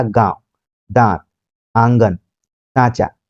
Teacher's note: और अनुनासिक जो है इसकी जो ध्वनि है नाक और मुंह दोनों से निकलती है और इसमें उच्चारण में लघुता बनी रहती है, ज्यादा समय तक इसका उच्चारण नहीं होता